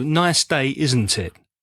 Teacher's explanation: So don't say, "Nice day, isn't it?" because that's more like a question. Make sure your intonation drops at the end. · The intonation on tag questions that you would invite somebody to speak to you would go down. So don't say, "Nice day, isn't it?" because that's more like a question.